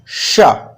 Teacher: टा बोलने से पहले जैसी हमारी जीभ होती है वैसे मोड़ेंगे और कहेंगे शा।